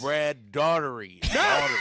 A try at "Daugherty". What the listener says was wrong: You put that T in a little bit too soon, dog.